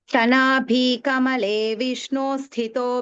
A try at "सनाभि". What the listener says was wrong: Sana bhi is not dirgha. Bhi is rasva.